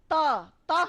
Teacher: त हम बोलते हैं तो हमारी जीभ हमारे दांतों तक आती है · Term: दंत्य